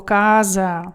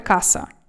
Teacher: коли ви бачите в італійській мові буква С між двома голосними, вона читається завжди як з